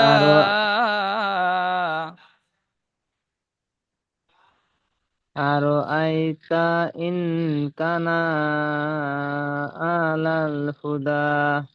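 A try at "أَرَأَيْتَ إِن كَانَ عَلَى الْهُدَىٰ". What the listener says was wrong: ইন কানা বলে নুন টান দিচ্ছেন, কাপটি টান হবে, কাপ টান দিচ্ছেন না, নুন টান দিচ্ছেন, নুন টান হবে না, কাপ টান দিয়ে পড়বেন। আর আইতা ইন কানা আলাল হুদা।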